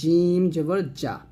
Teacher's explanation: মাখাজ বুঝতে হবে মাখাসটা জিহ্বার আগা নিচের দাঁতে লাগাতে হবে আর জিম জিহ্বার মধ্যখান উপরের তালের সঙ্গে লাগাতে হবে